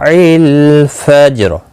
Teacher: را ساکن جب ہوگا وقف کی صورت میں تو اس زبر کی وجہ سے را پر پڑھا جائے گا